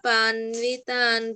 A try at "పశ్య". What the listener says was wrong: పన్వ కాదు, పశ్య. పశ్య అక్కడ శ్యా ఉంది కదా, పశ్య చెప్పు.